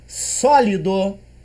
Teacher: eu percebo que a antepenúltima sílaba é mais forte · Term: proparoxítona